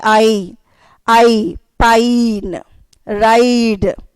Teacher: I'm not using two vowels over here. A single vowel, that is I, is used as two vowel sounds, that is a diphthong.